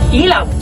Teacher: Ang letrang I naman, mas mataas ang posisyon ng dila, medyo sarado ang bibig.